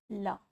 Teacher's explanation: वर्णों का उच्चारण करते समय प्राणवायु जीवा के दोनों पार्श्व से निकल जाती है, उन्हें पार्श्विक व्यंजन कहा जाता है।